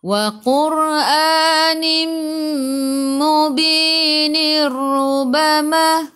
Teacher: Tanwin di bawah bertemu dengan ra. Dia kena masuk sahaja, tak perlu dengung. Kalau nak sambung kat sini, kita masuk dia jadi idgham bila gunnah.